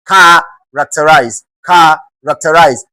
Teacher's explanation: You are expected to stress the first syllable